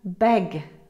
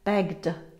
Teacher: G, beg. Feel your throat vibrate. It's voiced, so we add a d sound. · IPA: /g/